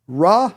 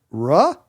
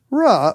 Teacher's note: are three tones there's flat rising and falling